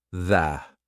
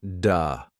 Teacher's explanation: Your tongue has to come through your teeth. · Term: TH sound